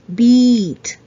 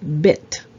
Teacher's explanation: so one thing I always say to my students is when you pronounce the e you're kind of smile right like E right and the other one is short so your mouth is a little bit closed